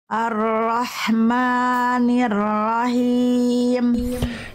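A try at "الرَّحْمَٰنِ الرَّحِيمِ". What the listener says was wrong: Him yang akhir kurang bunda, H kecilnya dari tengah tenggorokan berbisik, karakteristik nafasnya.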